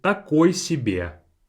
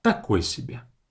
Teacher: Stress on the ta.